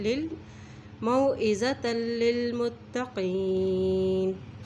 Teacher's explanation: ता की दो ज़बर को लाम के साथ मिला रहे हैं क्योंकि लाम के ऊपर शद है